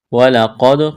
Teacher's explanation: قاف کو موٹا کرنا ہے، دال ساکن ہے، دال کے اوپر جزم ہے، قلقلہ کریں گے دال پر۔